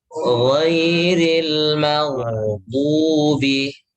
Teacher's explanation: Kalau ghain itu yang mengalir bukan udara ya, bukan nafas tapi suara. Ghairil maghdubi, ghain tebalkan karena dia punya sifat isti'ala.